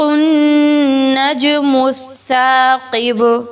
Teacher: جیم کو اس لیے ہلا کے پڑھا ہے کیونکہ جیم حروف قلقلہ میں سے ہے